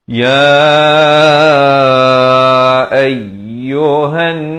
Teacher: Ya ayyuhan ya tu dipanjangkan empat atau lima harakat. Kemudian hamzah baris atas naik di atas ya yang bersabdu. · ya itu dipanjangkan 4 atau 5 harakat